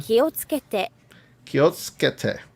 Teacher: 気をつけて Kiotsukete. So you have that su sound and it gets lost in the rest of it